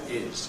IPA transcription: ɪz